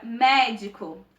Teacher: a sílaba mais forte é o mé, ou seja, a antepenúltima sílaba. A sílaba tônica é representada na grafia pelos acentos agudo e circunflexo.